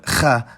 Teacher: there's the voiceless uvular fricative kha, but Arabic also has its voiced counterpart gha. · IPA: [χ]